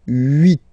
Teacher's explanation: in French this H letter here, okay, doesn't exist phonetically, so we don't really pronounce it, okay, so if you listen carefully, you will only listen or hear these vowels at the beginning of the word.